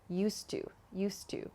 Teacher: So not used to, but native speakers connect the D and the T sound at the end of used and to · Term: dropping the d, dropping the D